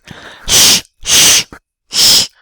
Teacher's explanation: making an l with your tongue against your teeth we call that alveodental making an l and then breathing through it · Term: aspirated l